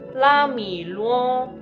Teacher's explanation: La de primera entonación, mi de la tercera entonación y luo de la primera entonación